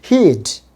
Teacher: উচ্চারণটা এখানে long sound হবে হিড। আমি আবার বলছি হিড, নট হিড, হিড। একটু ইলংগেটেড করতে হবে। হি উড কন্ট্রাক্টেড ফর্মে উচ্চারণ হবে হিড।